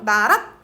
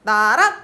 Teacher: 그리고 왼편에 방점 써놨어. 나랏 하고 위로 올라가요. 랏 그리고 짧은 소리. 그래서 이 랏은 거성이면서 입성이다.